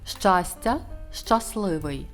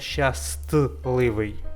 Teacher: Для прикладу випадає звук т.